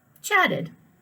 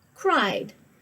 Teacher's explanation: So chatted, you hear the ED. Cried, you just hear the D.